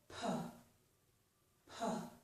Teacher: I stop the air, then I release it in a forceful way. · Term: stop plosive